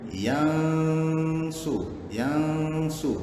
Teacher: Nun mati bertemu sad. Bunyi dengung dia dengar. Yang su. Tidak jelas ataupun sengau.